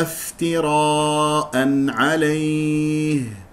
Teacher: الراء مفخمه لان مفتوحه والالف تتبع الراء